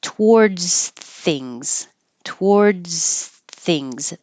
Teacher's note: the S and the th both have constant air flow